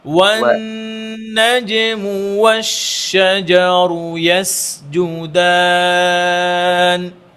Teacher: ওয়াও পড়ার ক্ষেত্রে খেয়াল করব যেন ওয়াও মোটা না হয়ে যায়, ঠোঁট গোল করে ওয়াও